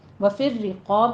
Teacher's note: والسائلین، وفی الرقاب میں بھی ہمارے پاس را کے اوپر تشدید ہے، سختی کے ساتھ پڑھیں گے، اور را کسرہ کی تشدید والی ہے، اس لیے اس کو مرقق یعنی کہ باریک پڑھا جائے گا